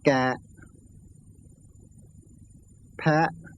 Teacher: words ending in a short vowel have an automatic glottal stop ending them, so they're considered closed.